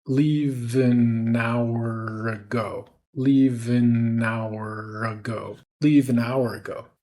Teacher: we're linking all four of those words, consonant to vowel in each one.